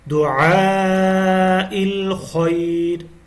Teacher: خا کو heavy sound میں پڑھنا ہے، موٹی آواز میں پڑھنا ہے